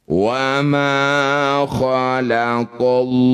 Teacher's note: Lafaz Allah didahului fathah disebut lafaz Allah tafkhim atau tebal ya.